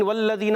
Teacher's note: واو کی ادائیگی ہونٹوں کی گولائی سے، لام مشدد ذرا رک کر ادا کریں گے۔ والذین، ذال یا ذی، یہاں مدہ ہے، ذال کو زا نہیں پڑھنا، والذین پڑھنا ہے، والذین نہیں پڑھنا۔